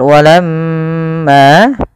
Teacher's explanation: usahakan kita menahan daripada bunyi suara mim karena di sini dilihat mimnya berharakat tasydid